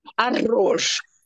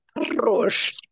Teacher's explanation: Note that the two R's are rolled. Arroz. You should not say arroz.